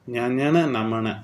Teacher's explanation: மெலிசா இது ரொம்ப மெல்லியா மென்மையா இருக்கும் அதாவது மூக்குல இது ஒலிக்கும் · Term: மெல்லினம்